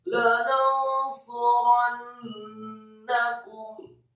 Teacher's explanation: Kata suranna, sadinya marfu satu harokat, kemudian roknya fathah satu harokat, kemudian nunnya ditasydidkan. Kembali nun yang tasydid, gunnahnya dibaca panjang atau seperti mat dua harokat